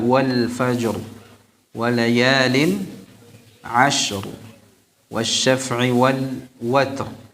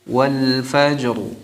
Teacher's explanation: disepakati bacaan ra-nya tafkhim. Ya. Ini semuanya dibaca dengan tebal.